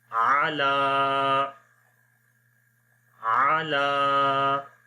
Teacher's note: کیا جائے گا، عین زبر عا، لام کھڑی زبر لا، علا، عین کو نہیں لمبا کریں گے، اونلی لام کو لمبا کریں گے